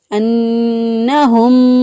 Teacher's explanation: نون مشدد پر ہمیشہ گنہ ہوتا ہے، ایک الف کے برابر گنہ کی آواز کو ناک میں ٹھہراتے ہوئے ادا کریں گے۔ انہم، ہا جو ہے اس کو اقصا حلق سے ادا کیا۔